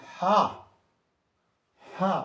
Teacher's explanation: ہا حلق میں بولا جاتا ہے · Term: حروف حلقی